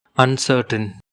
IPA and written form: ʌnˈsɜː.tən (UNCERTAIN)